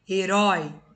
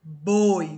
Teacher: herói né o som é de ó então tem acento boi o som é de o